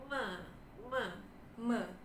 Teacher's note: Suaranya aliran udaranya keluar lewat hidung juga. · Dia adalah bilabial. Kemudian dia voiced karena kita ada getaran teman-teman. Dan dia adalah nasal.